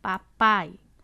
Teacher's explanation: sílaba o fonema vocálico que se destaca é o a papai o a aparece mais ele é a vogal o outro fonema vocálico i não é tão forte quanto ele é a semivogal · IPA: /i/